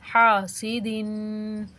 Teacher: سین کے اوپر حرکت غیر مدہ، بغیر کھینچے پڑھیں گے، اور دال کے نیچے دو زیر، یہ تنوین ہے، تنوین کو ناک میں آواز نکال کے غنہ کے ساتھ پڑھیں گے